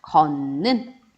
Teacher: 근데 걷는 이렇게 따로 발음해주기 너무 힘드니까 디귿과 같은 위치에 있는 비음, 니은으로 변하는 겁니다. 걷는 이렇게 변하는 거고요.